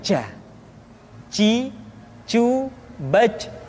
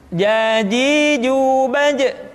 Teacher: kalau kita melihat sifat yang dimiliki huruf ja, dia tidak boleh mengalir nafas karena sifatnya al-jahr, lawan dari al-hamas.